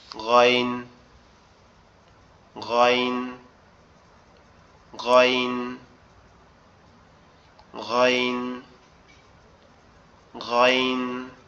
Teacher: গয়ন যে অক্ষরটা, এটা হচ্ছে আমাদের কণ্ঠনালীর একবারে শেষ ভাগ, অর্থাৎ এই যে গলার এইখান থেকে একদম গলার সাথে মাথার যে অংশটা লেগে আছে, এইখান থেকে কি হবে, এখান থেকে উচ্চারিত হবে।